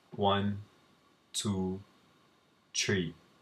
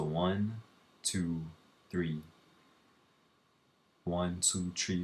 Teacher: the one biggest thing is the fact that you drop the H so that it's not pronounced